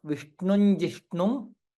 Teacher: Since here Anuswara followed by ja, it will be nya. Vishnun Jishnum, nya and ja.